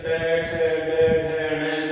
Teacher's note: ट से लेकर ट, ठ, ड, ढ, ण तक इनका उच्चारण स्थान मूर्धा होता है।